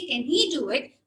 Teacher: I reduce the vowel, I shorten the vowel can. I shorten the vowel sound a in can. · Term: gradation